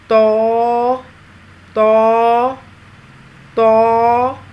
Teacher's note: زبان کے پچھلے حصے کو تالو کی طرف بلند کرتے ہوئے موٹی آواز میں پڑھیں گے۔ پور آواز، موٹی آواز، یعنی تو تو تو۔